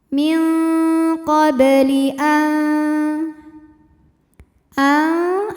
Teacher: ada hukum ikhfa aqraob karena nun sukun menghadapi huruf Ta Maka bunyi nun sukun samar-samar siap-siap menuju ta disertai bunyi dengung